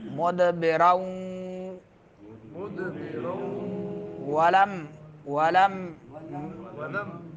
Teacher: تنوین کے بعد واو آ رہا ہے، پھر غنہ ادغام مال غنہ ہوگا